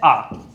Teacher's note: आ का उच्चारण करते समय जो जीवा है वो ऊपर तालु से टकराने की कोशिश के बजाय नीचे की तरफ मुड़ेगी। कहां मुड़ेगी, नीचे की तरफ मुड़ेगी। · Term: विवर्त